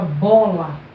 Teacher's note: no caso da palavra bola, essa sílaba aqui, bo, ela é pronunciada com mais força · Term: sílaba tônica